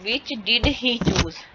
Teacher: ही जो है वो एच जो इसकी साउंड नहीं आ रही